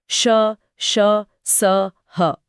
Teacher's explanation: इनमें हवा के लिए रास्ता संकरा हो जाता है, जिससे हवा रगड़ खाकर निकलती है। श बोलते समय वो हिस की आवाज साफ सुनाई देती है। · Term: ऊष्म व्यंजन